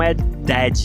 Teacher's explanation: Você quase nem fala esse D no final.